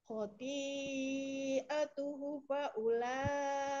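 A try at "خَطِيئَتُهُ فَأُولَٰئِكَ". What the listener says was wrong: Nah, hu-nya 2 harokat. Khoti'atuhu fa'ula. Hu-nya 2 harokat. Kalau itu masih dibaca pendek. Kalau khoti'atuhu fa'ula itu masih dibaca pendek hu-nya. Tapi hu-nya dibaca berapa harokat? 2 harokat.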